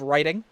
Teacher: the T in there could be replaced as a D. It could sound like riding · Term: intervocalic flapping